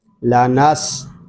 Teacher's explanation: لا نس. سین یہ حروف صفیریہ میں سے ہے اس میں سیٹی کی آواز آئے گی. لا نس.